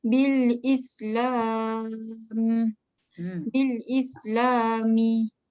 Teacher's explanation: Ya, sifat huruf sin bila dia bertanda sukun ya, mesti bertanda sukun ya. Sifat dia hamas tu ada angin ya, dan sofir tu ada bunyi desir.